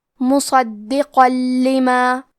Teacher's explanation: قاف پہ تنوین زبر ہے، اگر یہ کلمہ کو پوری آیت کے ساتھ ملا کے پڑھے تو حرف اللام کلمت لما حروف الادغام بغیر غنہ میں سے ہے، تو ہم تنوین کو لام میں ملا کے بغیر غنہ سے لیکن تشدید کے ساتھ یہ حکم کو ادا کریں گے مصدقا لما. اور اگر ہم کلمت مصدقہ پہ رکے تو تنوین زبر پہ مد الف سے رکیں گے.